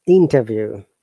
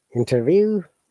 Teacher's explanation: we have stressing on the first part but if you have to use as a verb then you have to stress in the second part